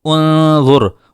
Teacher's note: انظر میں را سے پہلے پیش ہے وا کے اوپر جس کی وجہ سے ہم را کو پر کریں گے